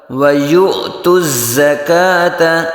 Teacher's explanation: यू हमज़ा साकना में झटका